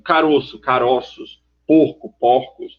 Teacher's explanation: ela vai ter um som fechado no singular é aberto no plural